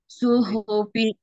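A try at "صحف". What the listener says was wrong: Ini tebal. Suhufi beda. Su dengan su. Beda. Ya. Suhufi. Shad tebal.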